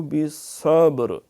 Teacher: با کے اوپر قلقلہ ہے، را پھر جو ہے وہ پور ہے کیونکہ پیچھے صاد ہے، اس پہ زبر ہے۔